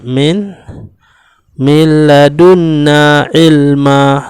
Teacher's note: Nun mati bertemu dengan lam, maka hukumnya ialah idgham bila gunnah, iaitu tidak disertai dengan dengung.